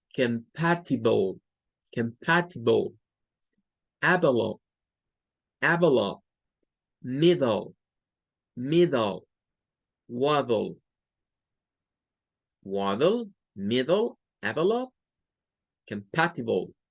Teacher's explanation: Puede ser la IB, la AB o la D. Para todas estas se suena un schwa y una L.